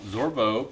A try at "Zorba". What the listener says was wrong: Zorba. There's no O at the end.